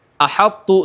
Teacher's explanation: تو کی اطباق کی صفت باقی رہ رہی ہے